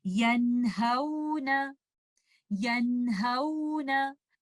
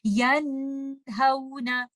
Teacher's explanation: तो हम इसको पढ़ते हुए नून साकिना को उसके प्रॉपर मखरज और उसकी सिफात के साथ अदा करेंगे और हम इसको पढ़ेंगे यनहौना यनहौना। आप यहाँ पर गुन्ना की करेक्टरिस्टिक को बहुत लंबा नहीं कर देंगे, आप ऐसे नहीं करेंगे यनहौना, इस तरह से इसको नहीं पढ़ेंगे क्योंकि नून एक इजहार की कंडीशन में है।